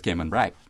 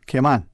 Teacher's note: we tend to minimize that strong accentuation on the last syllable